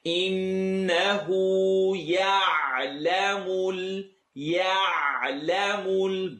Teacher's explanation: Noon shadda, the noon with a W is rule number 3 of rhythm. Full nasal sound.